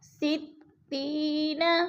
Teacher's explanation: یا ساکن سے پہلے تا کے نیچے زیر ہے تو یا مدہ، یا مدہ کو ہم نے ایک الف دو حرکات کے برابر لمبا کر کے پڑھنا ہے